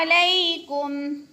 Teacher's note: انعمت علیکم، علی پہ یا ساکن سے پہلے زبر ہے تو یا مدہ ہے، ایک حرکات کے برابر کھینچ کر پڑھنا ہے، نہیں بلکہ یالین ہے، ادھر یالین ہو رہا ہے، یا مدہ نہیں ہو رہا ہے، یالین ہے، یا ساکن سے پہلے زبر ہو تو یالین، نہ کھینچ کر پڑھنا ہے نہ جھٹکا دینا ہے